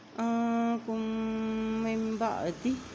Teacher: کاف کی پیش کو میم کے ساتھ ملاتے ہوئے یہاں غنہ بھی کریں گے